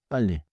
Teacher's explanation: 이 소리는 혀끝을 윗잇몸 쪽에 대고 잠깐 유지하는 느낌이에요. Keep the tongue contact a little longer. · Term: 리을 두 개